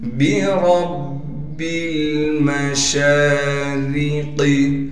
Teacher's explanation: بِرَبِّ الْمَشَارِقِ، با کو باریک پڑھیں گے، را کو موٹا کر کے پڑھیں گے اس لیے کہ را پر زبر ہے